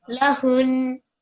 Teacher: لهون Not horn, because that makes this ha longer. We want to put stress on the noon, so it will be lahun.